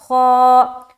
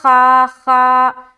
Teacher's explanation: حرف خا ہے، یہ ایک موٹے حروف میں سے ہے، تو اسے منہ بھر کر ہم پڑھیں گے اور کھینچتے ہوئے پڑھیں گے، کیونکہ اس کے ساتھ الف لگ کر آ رہا ہے۔